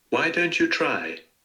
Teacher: So here the nucleus is on try